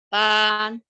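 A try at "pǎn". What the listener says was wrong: tiga ya agak turun ya Bu. Pan, pan. Pan, turun ya.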